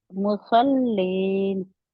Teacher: स्वाद को मोटा करने के बाद फौरन जब लाम के मखर पर जाएंगे तो आप लाम को मोटा नहीं रहने देंगे लाम के लिए जुबान की जड़ नीचे चली जाएगी